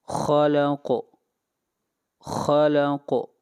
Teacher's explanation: بسمی ربک الذی، ربک الذی، یہاں پر را کو موٹا پڑھا جائے گا۔ خلق، خلق، خا کو موٹا پڑھیں گے، خا حروف مستعلیہ میں سے ہے